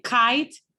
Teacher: like oral stops oral stops some examples are as in kite there's a blockage here of air in my velum